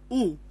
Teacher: when you speak o the shape of the lips is rounded